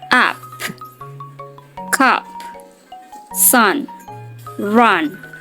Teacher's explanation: A, tapi lebih dalam di tenggorokan seperti bunyi E pada kata segar, namun sedikit lebih terbuka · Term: U yang pendek